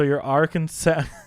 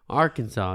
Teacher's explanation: the A in each syllable with the Italian sound and the accent on the first and last syllables